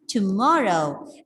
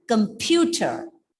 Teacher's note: So the stress is on the second syllable.